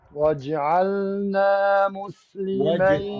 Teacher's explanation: لا تمسك الجيم تضربها وتهرب